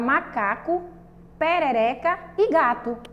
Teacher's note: são palavras paroxítonas tá porque a sílaba mais forte é a penúltima sílaba